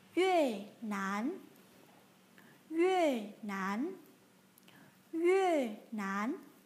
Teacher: các bạn phải giữ nguyên trạng thái tròn môi trong suốt quá trình phát âm, mặt lưỡi hơi tiếp xúc với phần ngạc trên.